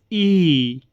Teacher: संवृत्त स्वर या ऊंचा स्वर ऐसी स्वर ध्वनि होती है जिसमें बिना व्यंजन की ध्वनि बनाए जिह्वा को मुंह में जितना संभव हो सके उतना ऊंचा और तालु से समीप रखा जाता है। उदाहरण के लिए ई, ये क्या है, संवृत्त स्वर है, ये ध्यान रखना आपने।